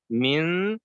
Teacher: we hide the sound again. The tongue is not going to hit the makhraj of noon. It's going to come close to it. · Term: Ikhfa